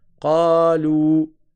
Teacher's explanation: Une première voyelle avec sa prolongation, une deuxième voyelle avec sa prolongation. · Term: 4 temps